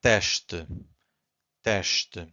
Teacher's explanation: So again, S before a consonant, it's a sh. 2 syllables here, we have to stress the first one, so it's teste.